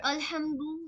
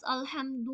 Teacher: यहां पे दाल में पेश है दो नहीं बोलना है